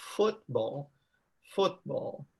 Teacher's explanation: the stress here is on the first syllable